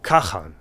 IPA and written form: kʰaxan (Khagan)